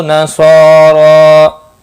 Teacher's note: صاد اور را دونوں کے اوپر کھڑی زبر ہے، ایک ایک الف کے برابر کھینچ کر پڑھیں گے۔ صاد مستعلیہ ہے، پر پڑھا جائے گا، را کھڑی زبر کی وجہ سے پر پڑھا جائے گا، اور وقف کی صورت میں ایک الف کے برابر ہی کھینچ کر وقف ہوگا۔